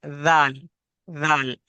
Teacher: जब हम जाल को अदा करेंगे तो हमारी जबान दोनों दांतों से हल्की सी बाहर आएगी, तो जाल अदा होगा।